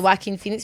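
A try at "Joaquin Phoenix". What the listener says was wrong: Yeah, just the way you say it, it sounds like whacking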